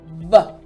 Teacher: the V sound is literally just you putting your front teeth on your bottom lip and you're going to vibrate